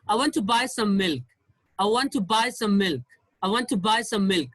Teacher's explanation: So there is no stress on I, to, and some.